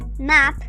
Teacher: Cuando la pronunciación es corta, es decir, short, la A se pronuncia tal como en español, es un sonido abierto